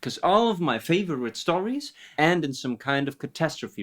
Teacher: Really, really cool switch between one stressed syllable and two unstressed syllables.